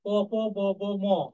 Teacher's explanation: এগুলো উচ্চারণ করার সময় আমাদের নিচের ঠোঁট উপরের ঠোঁটে গিয়ে স্পর্শ করে বা আঘাত করে, তাই এগুলোকে বলা হয় অষ্টধ্বনি।